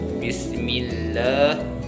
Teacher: hukum tajwidnya lillah, tarqiq sebabnya lafal Allah didahului oleh huruf hijaiyah, mim berharokat kasroh. Cara membacanya tipis.